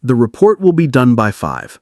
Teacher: A falling pitch at the end of a sentence signals confidence, finality, and authority. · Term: downtalk